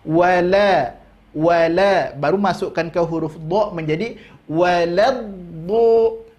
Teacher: Lam tipis, do tebal.